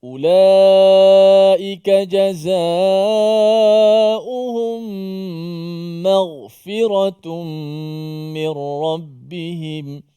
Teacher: Ma kita nipiskan ma, ghin sahaja yang ditebalkan. · Maghfirah, biar begitu. Jangan kita terpengaruh dengan ghin tu sehingga mim jadi mo, jadi tebalkan mo. Ma tu dinipiskan. Dan jangan kerana mim tu nipis, ghin pula nipis juga.